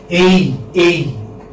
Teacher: So it's a glide from A to E. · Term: diphthong